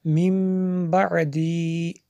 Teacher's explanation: جب اس کو جوڑ کے بغیر یعنی جوڑ کے ساتھ پڑھیں گے تو اس کو من پڑھیں گے، جب جوڑ کے بغیر پڑھیں گے تو اس کو میم پڑھیں گے، کیونکہ نون ساکن کے بعد با ہے تو یہاں پہ اخلاب ہوگا، اس لیے میں نے یہاں پہ غنہ بھی کیا